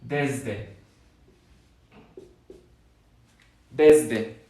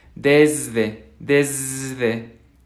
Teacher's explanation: Si se fijan esta S de aquí, al menos en mi acento, es una Z.